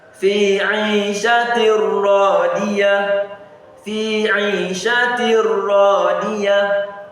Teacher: So it sounds as if it's only kasra that is there, not kasratan. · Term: idgham